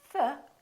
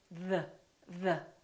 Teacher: the tip of the tongue is touching your upper teeth. And there's an airflow coming out while the tongue is touching the upper teeth. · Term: TH sound